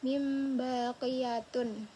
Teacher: nun bertemu dengan ba mim ba jadi kayak bersatu. Jadinya mim bukan nun lagi. Jadi kan kalau nun min ba jadi kan enggak nyambung jadi mim ba gitu jadi berubah jadi mim. · nun mati dan tanwin ini dibacanya bukan nun dan tanwin gitu, Guys. Langsung jadi mim gitu berubah. Tapi cuman suaranya aja, bukan tulisannya. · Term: iqlab